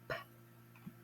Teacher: Notice I'm barely touching my lips together with a puff of air.